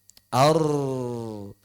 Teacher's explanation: kalau ra karena dia punya getaran akhirnya sempat terbuka. Jadi terkunci terbuka, terkunci terbuka, terkunci terbuka. Ar. Maka suaranya bukan ar, bukan, tapi ar, ar, ar, ar. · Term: takrir